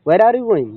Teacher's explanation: वेयर normal बोला गया, लेकिन लास्ट में जाते जाते इस समय थोड़ा सा गोइंग को एक लाउडली बोला गया। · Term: फॉलिंग राइजिंग इंटोनेशन